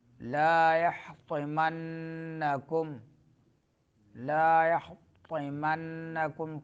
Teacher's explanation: طا زبان کی نوک جب سامنے دانتوں کے جڑوں سے لگے تو طا ادا ہوتا ہے